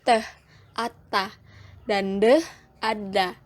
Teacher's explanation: fonem T dan D yaitu cara artikulasinya plosif atau letupan dan tempat artikulasinya di alveolar atau punggung gigi